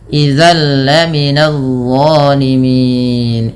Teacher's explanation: bunyi tanwinnya dimasukkan langsung ke huruf lam. Nah, idgham bila gunnah juga dikenal dengan idgham kamil, idgham yang sempurna sehingga masuk secara utuh dan tidak meninggalkan bunyi tanwin atau suara nunnya.